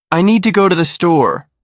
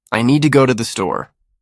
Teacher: Stress need. Go store. The little words become lighter.